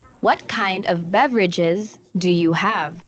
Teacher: this is falling intonation because it starts with wh